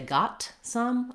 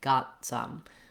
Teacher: stopping the t and releasing right into the s of some